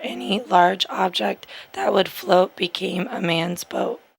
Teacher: we're going to hear a double pitch or a real high pitch squeak because of short segment phonation